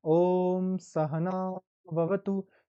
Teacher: तो जैसे मैंने सहना लंबा खींचा तो वो दीर्घ में चला जाएगा